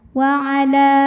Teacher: Jika berhenti di la, hukumnya adalah mad tabi'i karena huruf ini huruf alif, namanya alif bengkok atau alif maksurah. Alif didahului baris fathah, maka panjang lamnya 2 harokat. Wa ala. Namun dibaca panjangnya hanya saat berhenti saja.